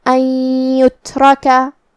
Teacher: کلمت ان یترکا، یہاں نون ساکن ہے، پھر حرف الیا ہے، یا حروف الادغام بغنہ میں سے ہے، اور ادغام کا معنی ہے حرف کو حرف میں داخل کرنا، لہذا ہم یہ نون کو یا میں ملا کے غنہ اور تشدید کے ساتھ یہ حکم کو ادا کریں گے